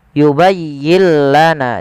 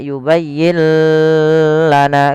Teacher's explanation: Idgamnya adalah nun sukunnya diidgamkan ke huruf lam. Maka yubayyla yubayyillana tidak yubayyin lana karena dia tanpa gunah. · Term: idgham bila ghunah